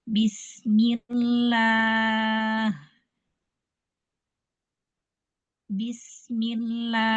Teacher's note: karena dia diawali dengan huruf yang berharokat kasroh, maka lam di sini menjadi tipis, ya. Sehingga alif setelah lam itu pun dibacanya juga tipis. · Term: dibaca tipis